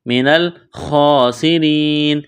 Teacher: سین کو باریک کرنا ہے، سیٹھی کی آواز پیدا کرنی ہے، را کو باریک کرنا ہے، یا ساکن سے پہلے زیر ہے، یا مدہ ہے، ایک الف کے برابر کھینچنا ہے۔